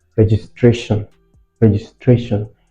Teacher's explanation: So registration has its stress on the third syllable.